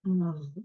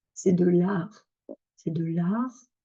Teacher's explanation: Alors autre, son avec le A ouvert, c'est lorsque la syllabe ou le mot se termine par une consonne, notamment en particulier le R. Parce que si on a d'abord une voyelle et ensuite un R, une voyelle A, on va avoir tendance à ouvrir, à garder notre R en bas et ça va bien avec un A ouvert.